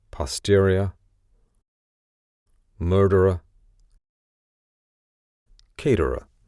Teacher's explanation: there's an R just before the ending, so the R on the end basically disappears